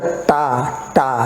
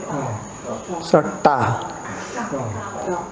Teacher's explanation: So this is that you have to have your tongue, if you see the tongue straight like this, and then when you have to pronounce it, the bottom part of the tip of the tongue has to touch the top part of the mouth, the cerebral part